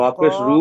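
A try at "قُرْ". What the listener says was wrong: কফ। মানে রপেশ রু হবে কেন? কফ রপেশ কুর হবে এটাই, পড়েন। বলে দিচ্ছি তো, কফ র পেশ কুর।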